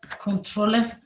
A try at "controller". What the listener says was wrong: Es falta la T. Controller.